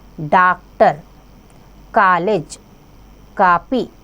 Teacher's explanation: आ आगत वर्ण है इसका उच्चारण आ और औ के मध्य की ध्वनि से होता है, जैसे डॉक्टर, कॉलेज, कॉपी आदि।